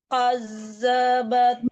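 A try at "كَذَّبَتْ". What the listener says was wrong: Dilembutkan membaca zal ya, Bu. Jangan kazzabat. Itu zai yang Bu baca ya. Ini zal, hurufnya lembut. Sekedar menempelkan ujung gigi ke lidah. Kazzabat.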